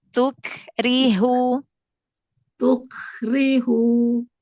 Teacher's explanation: nempel dulu di makhratnya bertemu dulu di makhratnya ya sidah tertahan suaranya ditahan dulu di makhratnya baru dia renggangkan sedikit makhratnya sambil dialirkan nafasnya untuk hamesnya